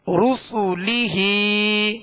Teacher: را سین اور لام کو دراز نہیں کریں گے، ہا کے نیچے کھڑا زیر ہے، اس کو ایک الف کی مقدار میں کھینچیں گے